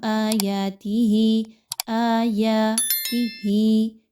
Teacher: وَيُرِيكُمْ آيَاتِهِ، آيَاتِهِ، تو اس میں کیا ہے کہ آپ نے کھڑا زبر کی حرکت کو 2 حرکات کے برابر رکھنا ہے، جبکہ زیر کی حرکت کو صرف 1، ٹھیک ہے؟ تو آپ نے زیادہ لمبا نہیں اس کو پڑھنا۔